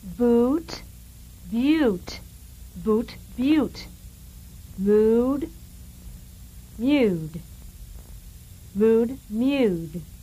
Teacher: contrasting the structural vowel oo and the Y1. This is putting a little Y in front of the oo, making it a U.